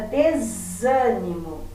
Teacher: o zan é a mais forte, é a antepenúltima sílaba, eu digo que ela é proparoxítona.